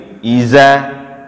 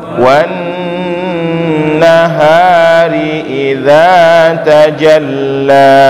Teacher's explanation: Jadi huruf za kita baca ketika kita baca itu ujung lidah, posisi ujung lidah berada di ujung gigi seri atas di sini. Maka posisinya tergigit ujung lidah kalau kita baca huruf za itu.